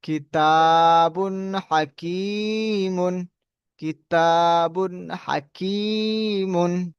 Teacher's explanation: বায়ের উপরে দুপেশ তানমিন, তানমিনের পরে হরফে হালকি 6টি অক্ষরের মধ্যে থেকে হা এসছে, তাই তানমিনের আওয়াজকে বিনা গুণনায় তাড়াতাড়ি পড়িতে হবে, ইহাকে ইজহার বলা হয়। হায়ের উপরে জবর, জবরটি হলো হারাকা, হারাকাতে পড়াকে তাড়াতাড়ি পড়তে হয়, টান দেওয়া নিষেধ।